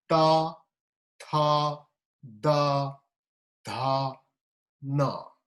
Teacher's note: your tip of the tongue touches the upper teeth, right? Upper front teeth. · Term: dental